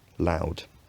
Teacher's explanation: In my accent, the first element of this diphthong has fronted